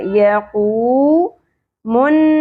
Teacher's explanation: یا کی زبر شارٹ ہوگی، واو ساکن حرف مدہ ، یقومن، نون مشدد بولنا ہوگا، زبر کے ساتھ الف، ایک